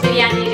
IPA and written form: bɪr.jaːniː (Biryani)